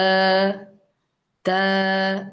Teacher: ത എന്ന് പറയുമ്പോൾ നാവിന്റെ ടിപ്പ് മേലെയുള്ള അണ്ണാക്കിലാണ് ടച്ച് ചെയ്യുന്നത്, അത് പല്ലിനൊന്നും ടച്ച് ആവൂല